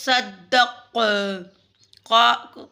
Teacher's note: قاف پہ قلقلہ ہوگا وقف میں